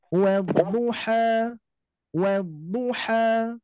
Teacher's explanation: jadi jangan sampai ada bunyi Hamzah di akhir